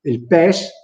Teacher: il pes, quella E lì, è aperta, tonica e breve